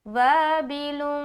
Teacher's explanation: اخفا جو ہے نا خوف سے بنا، اخفا کا مطلب ہی ہے چھپانا۔ تو نون کی آواز کو ہم ناک میں چھپاتے ہیں، جو کہلاتی ہے اخفا کرنا۔ تو یہاں پر ہم پڑھیں گے وابل۔